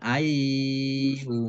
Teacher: Kemudian yastati'u kasroh ya sukun mat tabi'i 2 harokat. Ayyumilla nun sukun bertemu dengan huruf ya bacaan idgham bi gunnah masuk dengan mendengung yaitu mendengung ya ditandai ya-nya ada tasdidnya dibaca double ya-nya ayyumilla mendengung ya.